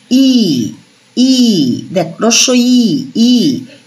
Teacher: দেখ, উচ্চারণ করবি ই ই, দেখ রস্য ই ই, ই উচ্চারণ করার সময় দেখবি আমাদের জিভটা সামনের দিকে আসছে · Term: সম্মুখ স্বরধ্বনি